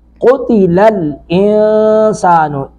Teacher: قتل الانسان، انسان نون ساکن کے بعد سین ہے، یہاں پہ اخفا کریں گے، زبان کو اوپر نہیں جانے دیں گے